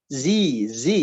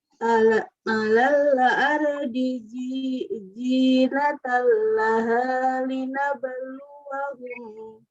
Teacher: patokannya huruf Z dalam bahasa Latin ya. Z, jadi ada gesekan.